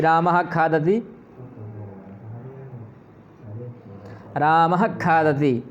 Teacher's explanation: का और खा से पहले यदि विसर्ग आ जाए तो यहाँ भी जो विसर्ग है रामः खादति, तो यहाँ पर भी आपको समझना होगा कि रामः खादति, रामः खादति, तो ये जिह्वामूलीय हो जाएगा